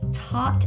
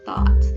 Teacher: he has difficulty saying his TH sound. So he'll say tot instead of thought